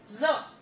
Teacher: जो अपनी टंग है वो ऊपर वाले टीथ के बैक साइड को टच करेगी।